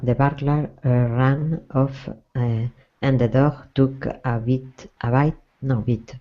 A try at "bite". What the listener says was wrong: Yep. No, you were right. Bite.